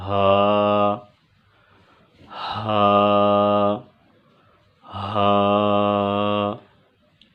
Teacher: حلق کا وہ حصہ جو سینے کی طرف ہے، اس سے ہا ادا ہوگا، اقصی حلق، جسے اقصی حلق بھی کہتے ہیں، حلق کا وہ حصہ جو سینے کی طرف ہے، اس سے ہا ادا ہوگا، ہا، ہا، ہا۔